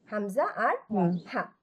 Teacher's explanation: হালকা কাশি দেওয়ার মতো করে এই দুইটা আমরা উচ্চারণ করবো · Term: হামজা এবং হা